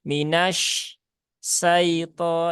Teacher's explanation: menghilangkan sifat tafasyi pada huruf shin pada lafadz minasya